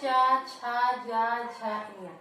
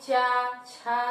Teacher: तो जब आप कहेंगे चा, तो आप देखिए चा, छा, तो आपको लगेगा कि हमारी जो जिह्वा है, हमारी जो जीभ है, ये हमारे ऊपरी तालु को जो है छू रही है, स्पर्श कर रही है। तो इसीलिए हम इसको कहते हैं तालव्य वर्ण।